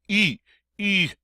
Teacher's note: it's like saying a long e sound in English through rounded lips and you might want to try that just round your lips